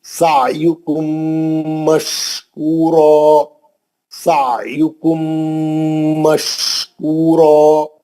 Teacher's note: عین صحیح پڑھیں گے، بیچ حلق سے، مرکزی حلق سے، وسط حلق سے، حلق کے بیچ میں سے آنا آواز